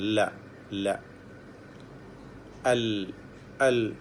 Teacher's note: ആ നാവിൻ്റെ അഗ്രവും മേലെ അണ്ണാക്കും, നാവിൻ്റെ സൈഡിൻ്റെ അറ്റം, അത് മേലെ അണ്ണാക്കിൽ ചേർത്തുകൊണ്ടാണ് ല എന്ന് ഉച്ചരിക്കുന്നത്. ല, അൽ, അൽ.